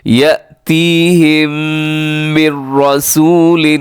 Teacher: پڑھا جاتا ہے، اسے یاتیہم نہیں پڑھنا بلکہ یأتیہم من رسول، یہاں پہ میم ساکن کے بعد میم ہے تو یہاں پر ادغام ہو رہا ہے ، جس کو ادغام شفی